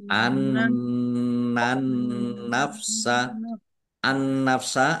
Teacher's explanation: An nafsa, an nafsa alif lam samsiah, ya, karena tidak dibaca langsung masuk ke huruf berikutnya yaitu nun, ditandai nunnya ada tasdidnya. Nun tasdid dibaca gunnah atau mendengung, ditahan biar tampak dengungannya.